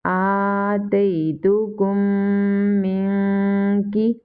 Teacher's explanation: Kaf is from ikhfa letters and comes after noon sakina. So here is ikhfa. We will do gunna.